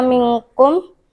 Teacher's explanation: hukum bacaan ikhfa bagian minkum karena berdengung